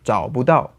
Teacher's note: the bù or bú turns out to be a fifth tone in the end when spoken quickly